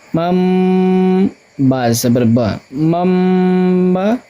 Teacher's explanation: تنوین، دو زبر، دو زیر، دو پیش یا نون ساکن کے بعد با آئے تو نون کو ہم کیا کریں گے؟ میم سے بدل کر غنہ اور اخفا کے ساتھ پڑھیں گے، اس کو ہم اقلاب کہتے ہیں